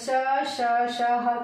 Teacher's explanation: श श श ह के लिए क्या होता है, जब हम उच्चारण करते हैं तो मुख वायु क्या होती है, गर्म होकर के बाहर निकलती है, इसलिए इसे क्या कहा जाता है, उष्ण व्यंजन कहा जाता है।